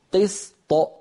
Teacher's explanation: ألصقت لساني على مخرج الطاء من غير صوت، ثم باعدت بين اللسان وغار الحنك بصوت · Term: الطاء المقلقلة